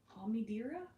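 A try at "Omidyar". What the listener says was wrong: No, it's not dear. It's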